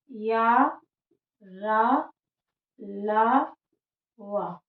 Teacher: अंतस्थ व्यंजन वे होते हैं जिनको बोलते समय जो वायु निकलती है वो सभी उच्चारण स्थान को थोड़ा थोड़ा टच करते हुए निकलती है, और उन्हें हम अंतस्थ व्यंजन कहते हैं।